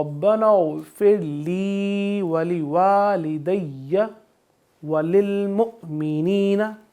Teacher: ولوالدی وللمؤمنین، اب کو میں نے جھٹکا دیا یہاں پہ کیونکہ حمزہ کے اوپر جزم ہے تو اس کو ہم جھٹکا دے کر پڑھیں گے